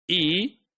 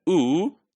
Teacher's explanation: what's the shape of the lips while producing these sounds e so lips are spread and ooh so for ooh lips are rounded